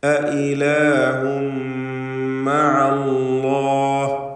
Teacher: തൻവീനിന് ശേഷമുള്ള മീമിൽ പൂർണ്ണമായും ലയിപ്പിച്ച് മണിക്കുക. ഇദ്ഗാം ബിഗുന്ന കാമിൽ.